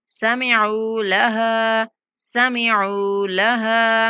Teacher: عین کے بعد واو مدہ ہے، عین کو کھینچنا ہے. لہا، ہا کے بعد الف مدہ ہے، ہا کو کھینچیں گے.